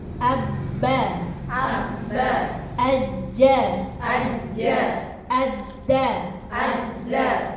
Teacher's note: yang perlu diperhatikan tadi ba, jim, dal itu ketika ditasydid tetap ada suaranya